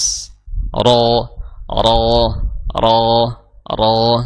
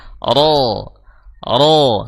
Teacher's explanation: yang membuat dia tebal yang membuat dia bunyinya berat itu karena adanya kenaikan dari sisi pangkal lidah jadi pangkal lidah itu naik agar kita bisa membunyikan suara tebal